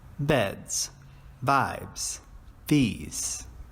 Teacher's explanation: the Z sound this is used after voice sounds